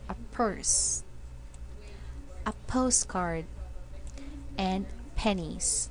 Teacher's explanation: the P sound that are pronounced with a strong puff of air